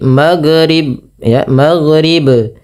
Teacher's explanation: Beberapa kesalahan yang terjadi ketika melafalkan huruf ghain yang berharakat sukun itu memantulkan huruf ghain